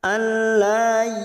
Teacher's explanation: Lam alif. Fathah diikuti alif 2 harokat.